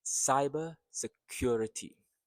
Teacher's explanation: Cyber security in one breath. Cyber. So the stress is in sigh.